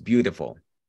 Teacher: Recuerden que esas T's entre vocales suenan como D's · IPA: /bjutəfəl/